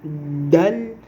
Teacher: Vous essayez de dire dal comme si vous voulez siffler. La langue se colle vers la mâchoire supérieure, là où il y a les dents en haut.